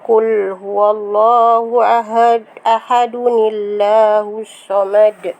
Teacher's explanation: bacaan lafzul jalalah yang dibaca dengan tarkik, iaitu nipis apabila sebelumnya berbaris bawah